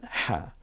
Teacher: 2টা অক্ষরই আরবিতে যা কণ্ঠনালীতে চাপ দিয়ে উচ্চারণ করতে হয়, একটা হলো আইন আর একটা হলো হা। আইন এবং হা এর মাখরাজ কণ্ঠনালীর মাঝখানে, এটাকে আওসাতে হলক বলে · এই হাটা কণ্ঠনালীতে চাপ দিয়ে বলেন